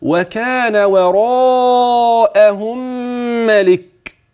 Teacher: أدي المد المتصل، وهتمد أربعة هتوصل